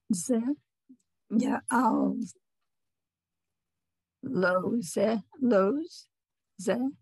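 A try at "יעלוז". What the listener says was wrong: Not ze. There's no e. Ya'alos.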